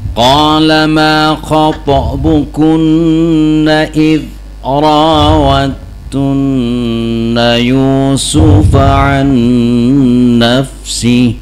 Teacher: jadi ketika baca dal id jangan ada qalqalah id, jangan ya.